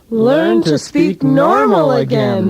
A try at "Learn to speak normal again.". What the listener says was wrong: No, wait, don't accent normal. You sound like a commercial.